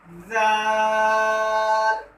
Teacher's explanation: और जब आप जाल को अदा करेंगे तो इसको भी उसी तरीके से अदा करेंगे जैसे आप सा को अदा करेंगे। तो इसको भी अदा करते वक्त आपने अपनी जो जुबान है वो दांतों के साथ टच करनी है।